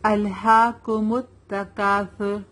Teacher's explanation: ہا کھڑا زبر ہا, ایک الف کے برابر کھینچیں گے اسے